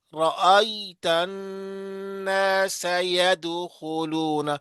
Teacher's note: اس میں الناس میں غنہ. نون غنہ شد ہے، والا نون ہے.